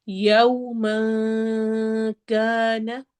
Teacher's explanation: یو واؤلین ہے، ہونٹ proper گول ہوں گے، اس کو یو نہیں پڑھنا، یو پڑھنا ہے۔